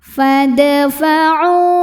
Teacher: Ada qalqalah sugro karena ada huruf qalqalah yaitu dal yang sukunnya asli dan ada di tengah bacaan. Cara membacanya dipantulkan dalnya dengan pantulan yang kecil.